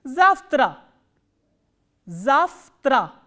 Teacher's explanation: pronounced as fir which is the voiceless counterpart